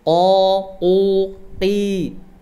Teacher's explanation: Qaf, kalau qaf ketika fathah dan dhammah dia baca tebal, tapi ketika dia kasroh dikurangi ketebalannya. O, u, qi, dikurangi ketebalannya, tapi tidak boleh tipis.